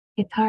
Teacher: Guitar has G, I, T, R. That A is making the ah sound because of that R after it.